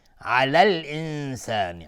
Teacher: علی الانسان الف لام قمری نون ساکن بعد سین اخفای حقیقی